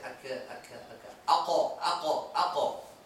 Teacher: You get it from the back of the throat. The kaf, you bring the tongue slightly forward, where the soft and the hard palate meet up, and you get a different sound. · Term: qaf